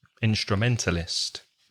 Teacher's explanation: five syllables instrumentalists stress the middle one